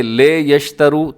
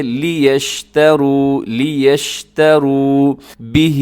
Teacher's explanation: لام زیر لے نہیں بلکہ لام زیر لی